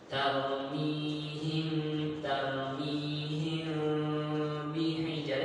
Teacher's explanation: Ada celah di mulut ketika membaca ikhfa syafawi